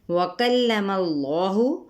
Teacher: اس میں جلالہ کا لام پر پڑھیں گے اور ساتھ ہی الف مدہ کرتے ہوئے